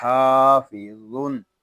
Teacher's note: غا یہ حروف مستعلیہ میں سے ہے، اس کو پور یعنی موٹا پڑھیں گے